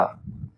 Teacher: लुंठित वर्ण वो होता है जिसके उच्चारण में जबान जो होती है वो ऊपर मूर्धा से रगड़कर उसका उच्चारण करती है, रगड़ती है।